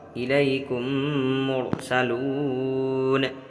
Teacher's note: میم ساکن کے بعد میم آئے تو میم کو میم سے ملا کر غنہ کے ساتھ پڑھا جائے گا